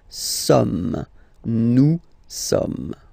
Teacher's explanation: So you don't pronounce the final S here. It doesn't exist.